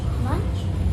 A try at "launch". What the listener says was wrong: Not lunch, because this doesn't say it says ah. Launch, right?